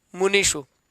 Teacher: मुनीषु में जो है वह मूर्धन्य शकार